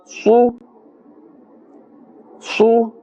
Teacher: Remember, ha, the makhraj is from the center of the throat. Sad is part of the huruf musta'aliyah, so that full mouth must be pronounced